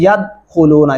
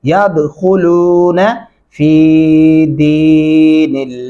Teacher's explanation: या ज़बर दाल याद, ख्वा पेश को, दाल के ऊपर कलकला होगा, खा को मोटा पढ़ेंगे